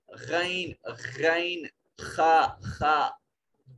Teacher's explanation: جب یہ ادا کریں تو آواز رگڑ کھاتی ہے، گلے کے ابتدائی حصہ سے آواز رگڑ کھاتی ہے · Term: ادنا حلق